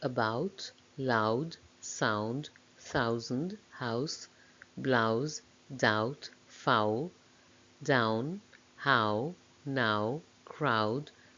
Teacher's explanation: this is a diphthong a double vowel sound the shape my mouth makes changes from the beginning of the sound to the end · begins with an open vowel between front and back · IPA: aʊ